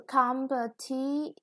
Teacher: The competition, the third syllable is stressed